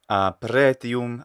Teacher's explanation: we hear pretium, a long E vowel instead of a short one